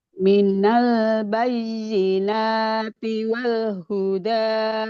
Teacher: Tadi nunnya kelewat panjangnya. Ini panjang ya nunnya dua harakat.